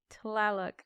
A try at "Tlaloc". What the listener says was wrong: You gotta lazy T it. You're putting too many syllables in there.